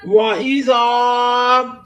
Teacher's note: زال کو نرم کریں اور الف مدہ بھی ہو رہا